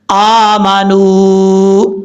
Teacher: اب یہاں پر واو ساکن ہے، واو ساکن سے پہلے پیش ہے تو یہاں واو مدہ ہوا. جب یہاں پر رکیں گے سٹاپ کریں گے تو واو مدہ کی وجہ سے 1 الف کی مقدار لمبا کر کے پڑھیں گے